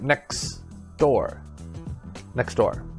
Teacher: so we dropped the t sound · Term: disappearing sound